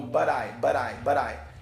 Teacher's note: Então esse som de T muda pra gente, né? Parece um R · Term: flap T